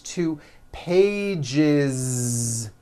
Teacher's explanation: Okay, so let's look at the word page, for example, which ends in a voiced sound. One page becomes two pages with that voiced Z.